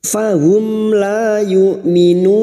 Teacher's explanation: Mim sukun bertemu lam dibaca jelas tanpa mendengung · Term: idhar safawi